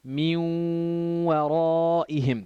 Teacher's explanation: You hold it for 2 beats and you do idgham. You join the noon to the waw.